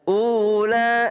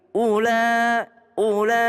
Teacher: u-nya tidak tidak panjang lanya panjang 4 sampai 5 harakat